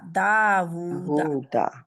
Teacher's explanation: تو یہ آپ دا جب آپ پڑھیں گے تو دال زبر الف دا اور واو الٹا پیش وو، دا وو، دونوں ہی 2 کاؤنٹ ہیں